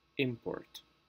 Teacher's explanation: if we are using this word as a noun the pronunciation normally goes on the first syllable